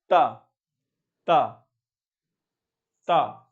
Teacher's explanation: तो देखो जीभ जो है आपके ऊपर वाले दांत पे लग रही है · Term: दंत ध्वनि